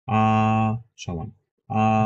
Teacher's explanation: তাহলে first tone একদম সমান